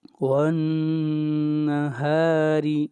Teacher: نون کے اوپر غنہ کریں گے، ہا کو لمبا کریں گے ایک الف کے برابر اور را کو باریک پڑھیں گے